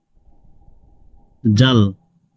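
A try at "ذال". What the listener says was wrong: জাল, আর একটু পাতলা, জাল, জাল না, জাল, জাল, না, বলতে হবে দা দা দা, সেদিন শিখিয়েছিলাম। জিহ্বার একদম সামনের সাইড উপরের দাঁতের সাথে লাগিয়ে বলতে হবে জাল, জাল,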